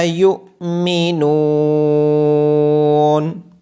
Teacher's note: یا کے بعد حمزہ ساکن ہونے کی وجہ سے یا کو جھٹکے کے ساتھ پڑھا جائے گا۔